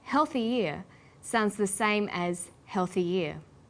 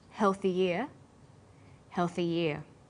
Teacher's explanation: When healthy is linked together with ear, a y sound is added. So, healthy ear and healthy year have the same pronunciation, shown phonetically like this: healthy ear, healthy year. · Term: y linking sound